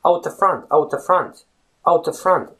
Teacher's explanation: I actually just said out at the front. But the two words at and the, they almost disappear in the larger sentence